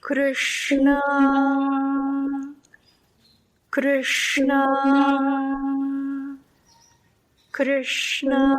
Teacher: the r, you're making a tap, sh, you're making air hiss there, and then na, you are kind of savoring a little contact during that na.